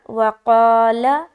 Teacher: قاف کی ادائیگی موٹے طریقے سے اور الف بھی موٹا ہوگا جب ہم الف مدہ کریں گے